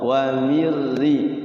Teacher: Ra itu getarannya hanya sekali